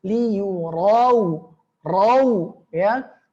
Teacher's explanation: ro-nya tebal ro berharokat fathah